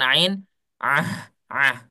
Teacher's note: sifat huruf ain adalah dia punya sifat yang namanya jahr ya tertahan nafasnya, tidak mengalir nafasnya. Ketika kita ucapkan ain ah enggak boleh mengalir nafasnya, ya.